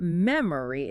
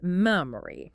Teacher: If we look at the word meari, the first syllable mem is stressed. The middle syllable O is reduced to the schwa sound.